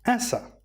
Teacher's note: the word as ends with a consonant and followed by a vowel, we can connect it as a CV rule. So, as a becomes asa. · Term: connected speech